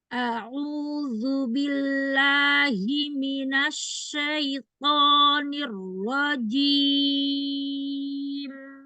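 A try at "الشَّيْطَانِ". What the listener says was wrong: Itu langsung keluar, jangan langsung keluar. Naikkan dulu ke langit-langit. Ke langit-langit tapi agak bagian depan. Syaito, syaito, syaito.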